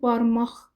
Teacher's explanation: Barmaq cingiltili ilə başlayır, amma karla bitir. Çünki barmaq, yəni q x-ya keçir.